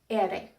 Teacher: The single R is tapped. Ere. It sounds like the double D in the word ladder, or the double T in the word bitter.